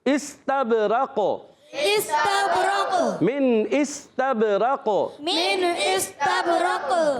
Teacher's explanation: قاف ساکن ہو جائے گا، وقف کی صورت میں قلقلہ ہوگا